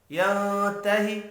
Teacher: نون ساکن کے بعد تا ہے، اخفاء حقیقی ہوگا